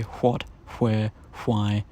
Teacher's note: one voiceless approximant has survived into modern English, and it's the consonant cluster of /hw/.